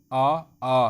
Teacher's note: तो कंठ से, गले से आ रही है ना आवाज़, तो ये आते हैं कंठ स्वर हो गए हमारे।